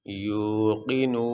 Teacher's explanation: واو ساکن سے پہلے پیش آ جائے تو اس کو حروف مدہ کہتے ہیں اور حروف مدہ کو لمبا کیا جاتا ہے۔ یا واو پیش یو، قاف زیر قی، نون واو پیش نو، یوقنو، نون زبرنا، یوقنون۔